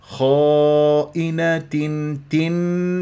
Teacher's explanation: لا تتك على الهمزه المكسوره